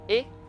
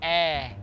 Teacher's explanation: o e curto é e enquanto o e longo é e ele é aberto e longo